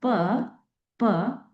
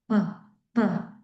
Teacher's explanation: in the place of articulation these two lips came into contact one another okay and that's why they are called billeial sounds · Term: stop